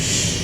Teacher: we did shh like an ocean because it's continuous